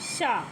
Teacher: दोस्तों, शा का जो उच्चारण स्थान है वो हमारा तालु से है।